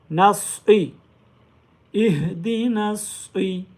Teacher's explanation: स्वाद को अदा करते हुए सीटी की आवाज़ भी आनी चाहिए और साथ में इसको मोटा भी करेंगे।